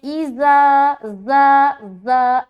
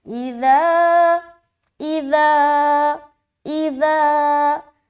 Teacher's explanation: دونوں صورت میں آپ کو بغیر سیٹی کے نرمی کے ساتھ اور باریک ادا کرنا ہے